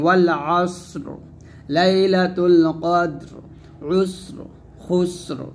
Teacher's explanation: তো ইয়া সাকিন ব্যতীত অন্য যে কোনো হরফে সাকিন আসলে সেভাবে যদি আমরা ওয়াকফ করি তাহলে সদ ওয়াকফ করলে সদ সাকিন হবে, রটা সাকিন হবে এবং রটা মোটা হবে।